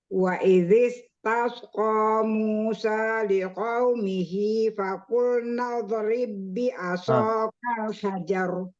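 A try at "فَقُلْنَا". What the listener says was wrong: Huruf dot ya. Fakulna lebih tebal.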